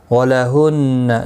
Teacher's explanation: نون مشدد پر گنہ ہوگا